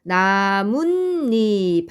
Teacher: 말이죠 그리고이 모음으로 시작하는 말이죠 그런데 최종적으로 소리가 나뭇잎 하고 이렇게 니은 니은 소리가 덧나는 현상이 발생합니다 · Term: 사잇소리 현상, 사이소리 현상